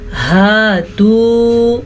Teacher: कुल हातू बुरहानकुम, कुल मोटा क़ाफ, हातू हा के तलफ़्फ़ुज़ का ध्यान रखना है, वाव मद्दा है तो इसे हम खींच के पढ़ेंगे।